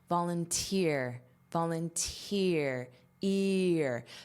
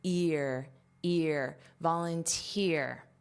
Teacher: Also notice the pronunciation of both the noun form and the verb form. The syllable stress is on the final syllable, which is not a regular syllable stress pattern in English.